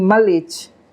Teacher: What happens in English if there's a word initial ML, for example, if somebody else tries to make you pronounce it, say a speaker of Hindi trying to make a speaker of English pronounce mlich, a repair strategy comes in and inserts the neutral vowel schwa, so the speaker of English ends up saying malich.